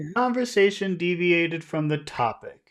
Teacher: what you want to do is you want to start high and then go low.